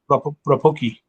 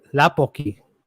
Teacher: So Yeah, the R becomes the L. Well, yeah, because the R is the first letter, it sounds like an L.